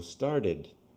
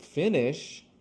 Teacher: Because it ends with a T sound, it has the id.